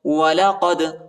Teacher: وَلَقَدْ، قاف کو دال کے ساتھ ملائیں گے، دال کو جھٹکے کے ساتھ پڑھیں گے، حروف قلقلہ کا حرف ہے